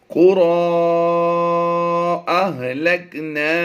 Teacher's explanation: را کھڑی زبر ایک الف کے برابر کھینچی جاتی ہے، لیکن اس کے بعد حمزہ دوسرے کلمے میں ہے تو یہ مد منفصل ہو جائے گی، تو اسے کم از کم 2 الف کھینچنا ہوگا